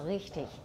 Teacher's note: So richtig, it's more fricative, not usually a trill. If you want to make it a trill and show off, you can.